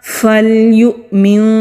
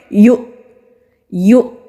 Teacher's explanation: جب حمزہ ساکن ہوتا ہے وہاں پر ہم جھٹکا دیتے ہیں، یعنی کہ سانس کو روک کر پھر سانس لیں گے۔ یو اس طرح کٹ آف ساؤنڈ آئے گی۔